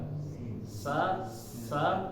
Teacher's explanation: ketika mengucapkannya anginnya lepas saja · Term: huruf sa